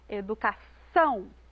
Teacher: na palavra educação a gente coloca mais ênfase lá na última sílaba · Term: sílaba tônica